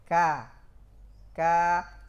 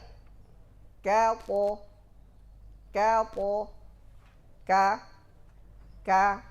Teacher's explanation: Istifal, pengarahan suara kaf ke arah bawah. Ka. Semakin panjang tetap ke arah bawah, tidak boleh sedikit pun naik ke atas.